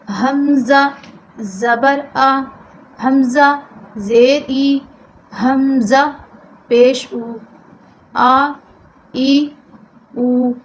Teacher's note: و حرکات کو معروف پڑھنا ہے بغیر کھینچے، بغیر جھٹکا دیے۔